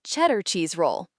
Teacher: The D sound in cheddar was almost silent. It sounded like cheddar cheese roll. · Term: connected speech